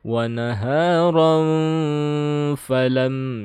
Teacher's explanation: Ini harus ikhfa-nya harus ditahan sekitar 3 harokat ya.